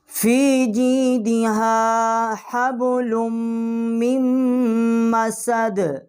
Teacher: میم من والی اور یہ مسد والی میم جو ہے اس کو ہم تشدید کر کے پڑھیں گے